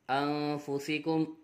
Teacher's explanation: حمزہ نون زبر ان، فا پیش فو، انفو، سین زیر سی، انفسی، کاف میم پیش کم، انفسکم نون ساکن کے بعد حروف اخفا میں سے فا آ رہا ہے، اخفا ہوگا، غنہ کر کے پڑھیں گے